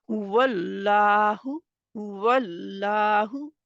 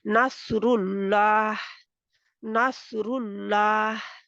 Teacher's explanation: जबर होगी जब लफ अल्लाह से पहले हर्फ पर जबर होगी तो अल्लाह के नाम में इस्तेमाल होने वाला लाम मोटा रहेगा